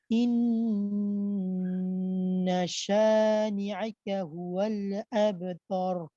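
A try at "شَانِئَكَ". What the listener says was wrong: আচ্ছা, শানি আকা আছে কিন্তু এখানে। শানি আকা যদি মনে করেন এইভাবে বলা হয় আকা বা ইয়াকা, তখন কিন্তু ইয়ার মতো হয়ে গেল, হামজাটা ক্লিয়ার হবে না। শানি আকা, শানি আকা।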